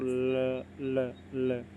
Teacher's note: ना मसूड़ा वाला हमारी जीभ वहां टच करती है और हवा हवा जीभ के दोनों ओर से बाहर निकल जाती है ल बोल कर देखो ल ल ल जीभ ऊपर की ओर · ल जीभ ऊपर की ओर पूरी टच करती है और हवा दोनों साइडों से बाहर निकल जाती है।